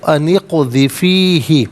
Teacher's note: اغذفی علیحدہ ہی علیحدہ ملا کر پڑھیں گے، اقذفی ہی، اور ان کے ساتھ ملائیں گے تو انقذفی ہی، قاف ساکن ہے لیکن حرف قلقلہ ہے تو آواز لوٹتی بھی محسوس ہونی چاہیے